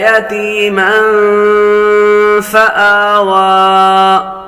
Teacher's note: میم پر تنوین ہے. تنوین کے بعد فا حروف اخفاء میں سے آ رہا ہے. غنہ کر کے پڑھیں گے